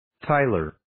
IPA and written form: 'taɪlər (Tyler)